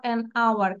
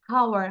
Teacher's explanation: খেয়াল করো, এই যে উচ্চারণ হচ্ছে না আওয়ার, তাহলে অ্যান আওয়ার। অ্যান আওয়ার আমরা কিন্তু বলি না যে হাওয়ার